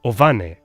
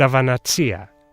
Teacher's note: But then you hear them utter a little v when they say ovane, the sheep, and avanatsia, the ewe. In Greece, those words are supposed to start with a vowel.